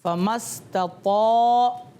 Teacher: طا کو موٹا کر کے پڑھا ہے نا میں نے، اور طا کو پڑھیں گے بھی ہمیشہ موٹا کر کے